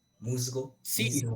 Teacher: cuando yo digo palabras como musgo o como mismo, a mí me suena sonora